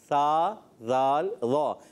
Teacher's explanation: सा का मखरज ज़बान का सिरा ऊपर के दांतों के अंदरूनी किनारे से